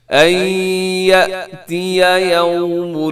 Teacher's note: یأتی کو جھٹکے سے پڑھیے گا کیونکہ یہ حمزہ ہے